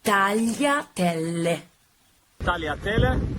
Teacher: Double L. So you have to pronounce it a little bit stronger than a normal L. So tagliatelle.